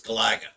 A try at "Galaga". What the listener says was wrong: You put the wrong emphasis on the wrong syllable. It's Galaga.